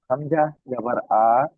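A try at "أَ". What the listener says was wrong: আ বলে টান দিচ্ছেন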